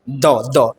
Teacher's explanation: तो द जब भी आप बोलिएगा तो आपको रियलाइज होगा कि बिना जीभ को दांत में हम लोग टच किए क्या हम लोग द बोल सकते हैं, नहीं बोल सकते। जीभ को बिना दांत में टच किए द बोलिए तो पॉसिबल ही नहीं। द दांत में टच होगा ही, कहाँ से, दंत से।